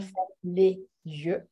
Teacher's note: il y a déjà la liaison la plus connue de z, comme ferme les yeux